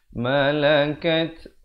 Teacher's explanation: Malakat ada hamasnya, bunyi angin di situ.